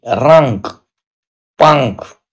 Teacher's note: इनका उच्चारण करते समय वायु केवल नाक से निकलती है। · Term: अनुस्वार